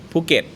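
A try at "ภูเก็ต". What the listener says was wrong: Yeah, but the emphasis is on the ket. So it's definitely a P. It's not a F. So Phuket.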